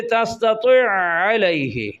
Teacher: عین کا عین میں ادغام ہوا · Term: ادغام مثلین